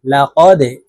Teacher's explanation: এখানে দাল কলকলার হরফ নিচের দিকে ধাবিত করে ধাক্কা দিয়ে উচ্চারণ করতে হবে।